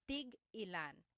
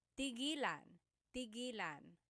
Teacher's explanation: So tig-ilan, when there's a hyphen in it, you have to have that glottal stop